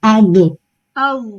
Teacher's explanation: کلکلے کی طرح bounce back نہیں کرنا، اس کو چھوڑنا نہیں ہے جگہ سے